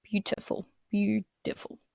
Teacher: the assimilation of the T sound to the D sound